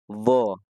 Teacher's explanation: sya ja ya kemudian di baris kelima ada huruf doad yaitu tepi lidah diletakkan di gigi Graham boleh yang kiri boleh yang kanan